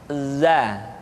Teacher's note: huruf za, diucapkan dengan cara ujung lidah kita berada di antara dua gigi seri bagian atas dan bagian bawah.